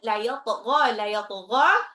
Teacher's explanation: la yatgha, ghainnya agak ngorok